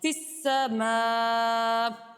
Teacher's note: فی السماء، یہاں پر الف سے پہلے زبر ہے، الف مدہ ہے اور الف سے پہلے باریک حرف ہے، اس لیے ہم الف کو باریک پڑھیں گے، اور حروف مدہ کے بعد حمزہ اسی ہی کلمے میں موجود ہے، یعنی فی السماء ایک ہی کلمہ ہے، اس لیے یہاں پر ہم مد متصل کریں گے اور اسے 2.5 الف کی مقدار ہم کھینچ کر ادا کریں گے